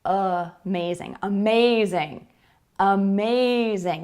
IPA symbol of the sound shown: ə